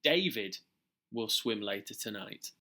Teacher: here the speaker is emphasizing who will go swimming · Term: sentence stress